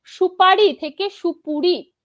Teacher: পূর্ববর্তী উ ধ্বনির প্রভাবে পরবর্তী আ ধ্বনিটা চেঞ্জ হয়ে একই ধ্বনি উতে পরিণত হয়েছে সেই কারণে এটাকে বলা হচ্ছে প্রগত স্বরসঙ্গতি দাঁড়ান প্রগত স্বরসঙ্গতি এর